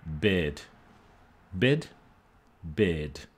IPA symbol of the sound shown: bɪd